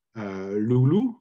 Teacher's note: clearly there is no difference no obvious difference at least between the two vowels as far as length or intensity is involved